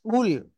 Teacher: কফ লাম পেশ কুল মোটা আওয়াজে পড়তে হবে